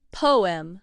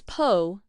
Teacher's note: in British English pronunciation, the two syllables are more clearly spoken